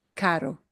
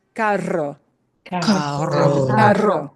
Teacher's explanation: A single R gets only one flap of your tongue.